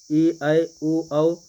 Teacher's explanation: ए, ऐ, ओ, औ संयुक्त स्वर हैं, क्योंकि इनके उच्चारण में 2 स्वरों का योग दिखता है